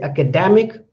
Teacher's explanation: when I say academic, the da is more stressed